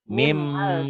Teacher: Ditulisnya ada bunyi N-nya dibacanya bunyi N-nya hilang. Hilang melebur ke bunyi M. Karena setelah N ketemu Iya. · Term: Idgom diguna